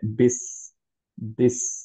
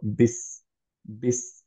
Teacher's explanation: সিন হচ্ছে রাখাওয়া, তাহলে আমরা সিনটাকে ধরে রাখবো একটুক্ষণ যখন সুকুনে আছে। ফর এক্সাম্পল, আমরা যদি বিসমিল্লাহ বলতে চাই, তাহলে আমরা বলবো হচ্ছে বিস, বিস, একটু টাইম দিব আমাদের যাতে ধরে রাখা হয়।